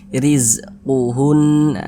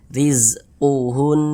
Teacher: tanda baca kasrah maka huruf ro dibaca tipis dibaca tarkik rizquun ditipiskan huruf rnya sehingga pangkal lisan kita itu tidak naik terangkat ke atas